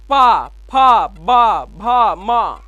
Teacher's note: हम इनका जब उच्चारण करें हमारे ओष्ठ जो है कि स्पर्श करें तो इनका जो उच्चारण स्थान होता है क्या होता है, ओष्ठा होता है।